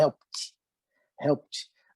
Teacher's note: Esse E aqui, ele vai ser suprimido, ele não aparece, né? Ele é só para enfeite, helped.